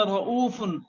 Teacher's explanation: را پر زبر ہے تو را کو ہم پر پڑھیں گے، موٹا پڑھیں گے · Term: را کو پر پڑھیں گے